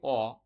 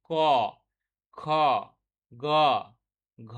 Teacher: মানে ধরুন আমরা যদি বলি অ, দেখুন বাধা কিন্তু কম হচ্ছে, কিন্তু আ, এই অ, আ এগুলো স্বরধ্বনি, এগুলোতে বাধা কম হচ্ছে।